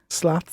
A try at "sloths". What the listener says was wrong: Slots. You said it like slots, like heading for the slots in Atlantic City.